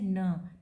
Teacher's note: Nasal है, stop है क्योंकि पैसेज को पूरा ब्लॉक करके सडन रिलीज़ किया जाता है। एलोवेलर है, वॉइस है क्योंकि वाइब्रेशन होता है वोकल कॉर्ड्स में।